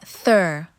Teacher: Dental, the tongue tip touches the upper teeth to create sounds like thur